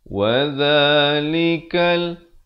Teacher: Di sini alif lam qamariyah, jadi lamnya disebutkan dengan jelas.